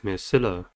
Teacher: Maxilla has three syllables and the stress is at the second one.